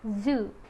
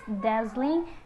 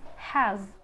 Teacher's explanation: void and a final is live the next sound is is voiced alveolar fricative